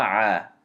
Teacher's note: And because ayn fatha is followed by alif saghira, you have to extend it two movements. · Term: mad tabeei